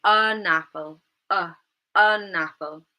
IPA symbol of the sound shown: ə